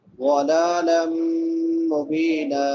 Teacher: لام کے اوپر کھڑی زبر ایک الف کے برابر لمبا